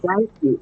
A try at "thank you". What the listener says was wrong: Yeah, pull that sound, make it longer. Thank you.